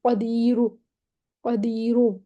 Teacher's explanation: بس بالکل ٹھک کر کے را پہ ہم وقف نہیں کر دیں گے، قدیر ایسے کر کے ہم وقف نہیں کر دیں گے. ہم بالکل را کو تھوڑی سی پیش کی آواز دیں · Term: روم کے ساتھ پڑھنا